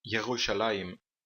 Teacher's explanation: o Sheva aqui não tem o som de A, de E, I, O ou U. É só um som bem curto. Não chega a ser uma vogal completa. É como, por exemplo, na palavra pagar, só que pronunciada por um português. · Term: Sheva vocal